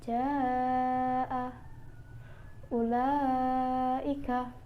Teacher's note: Yang pertama adalah mat wajib muttasil, yaitu apabila ada mat tabi'i bertemu dengan huruf hamzah dalam satu kata. Panjangnya 3 alif atau 6 harokat.